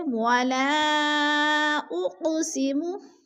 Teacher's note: حمزہ دوسرے کلمے میں آ گیا ہے تو مد منفصل ہے، 4 الفی مد ہے، ہم نے اس کو 4 الف کے برابر کھینچ کر پڑھنا ہے